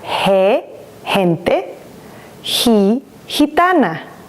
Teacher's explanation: Gu, like in gusano. And it makes the H sound of the letter H in English when it's together with the soft vowels